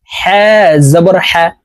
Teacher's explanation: হালকের মধ্যখান থেকে হা হরফ উচ্চারণ করতে হবে, কারণ হার মাখরাজ হালকের মধ্যখান থেকে হবে।